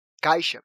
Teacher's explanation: a gente vai perceber que a primeira sílaba é a sílaba mais forte dessa palavra. Ou seja, é a sílaba tônica dessa palavra.